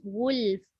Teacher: Jangan ghuf, jangan fa terus. Ghulf. Sediakan lam dulu.